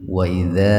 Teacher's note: karena ada fathah bertemu Alif sukun baca panjang dua ketukan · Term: Mad Thobi'i Alif